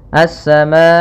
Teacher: Kemudian minas samai, pada lafal minassa ini ada alif lam syamsiyah, yang mana alif lamnya tertulis tapi tidak dibaca. Kita langsung baca ke sin